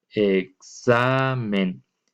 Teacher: Entonces, la xa es la sílaba tónica y la g recae sobre la xa.